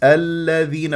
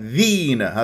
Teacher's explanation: المفتوحه الى لام الذين والذين ذكرتها في بدايه هذه الصفحه اسميه مدغمه مرققه لا اطيل جريان الصوت فيها حتى لا تصير رخوه